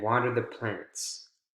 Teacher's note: that last item you want to make sure you have falling intonation